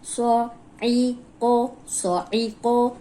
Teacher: اب یہ موٹا ہے صاد، عین جو ہے وہ حلق سے نکالنا ہے، قوف موٹا ہے، عین کو موٹا ہونے سے بچانا ہے۔